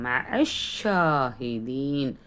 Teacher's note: ஷீனில் தஸ்தீத் இருக்குது, அழுத்தம் கொடுக்கணும். மேலே கடா மத் இருக்கிறதுனால 2 ஹரக்கத் நீட்டணும். மஅஷாஹிதீன்.